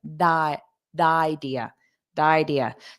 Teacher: A native speaker will probably turn this T into a soft D sound